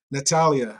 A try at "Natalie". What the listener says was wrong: Natalie Lee. There was no A at the end.